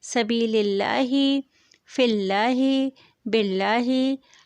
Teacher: لام باریک پڑھا گیا کیونکہ اس کے شروع والے لام میں زیر ہے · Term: ترقیق لام